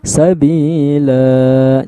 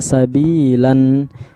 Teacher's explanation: karena tempat pemberhentian menjadi Sabila dua harokat panjangnya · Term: mad iwad